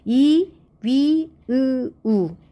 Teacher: 어쨌든 우리가 이제 고모음, 중모음, 저모음을 구별하는 기준은 혀의 높낮이에 따른 분류이고 혀가 이제 위로 올라가서 입을 조금만 벌리는 상태가 되는 거죠.